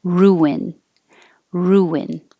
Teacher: When you say ooh, your lips go forward and then they come back to make the N, and it makes an invisible W.